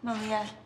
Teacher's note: Les acteurs ont eu énormément du mal à prononcer le prénom de Malia parce que même si pour nous en français c'est assez facile à prononcer, en VO c'est un peu plus compliqué étant donné qu'il fallait plus prononcer le lia que le ma